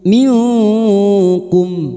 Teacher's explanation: Bertemunya nun sukun atau tanwin dengan 15 huruf ini termasuk huruf kaf. Maka bunyi nun sukun dibaca samar dan mendengung selama tiga harakat. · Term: ikfa hakiki